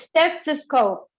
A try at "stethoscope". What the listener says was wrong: yes but don't don't add it remember no add no e there's no e there